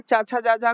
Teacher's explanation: स्पर्श संघर्षी कहे जाते हैं चाचा जाजा को